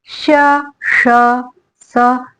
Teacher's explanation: इसको हम ऊष्म व्यंजन इसलिए कहते हैं कि जब हम कहते हैं श, स, तो हमारे मुंह से संघर्ष करती हुई ध्वनियां निकलती हैं, इसलिए इन्हें ऊष्म व्यंजन कहते हैं।